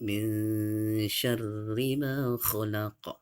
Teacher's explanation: maka dia dibaca dengung tetapi dengan cara samar. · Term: ikhfa hakiki